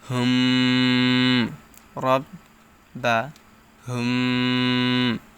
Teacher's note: আসছে ইন না রব বা হুম এটা হচ্ছে মিম সাকিনে ইকফা মিম সাকিনের পর বা হরফ আসলে উক্ত মিম সাকিন কে ইকফা করে পড়তে হয় এখানে একটু সময় নিতে হবে